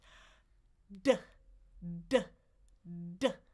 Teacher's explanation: It's a stop sound. So, I need to put my tongue against the ridge, stop the air, and then explode it.